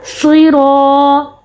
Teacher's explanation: الف سے پہلے زبر، اور کیونکہ را پہ زبر ہے تو را کو موٹا بھی پڑھیں گے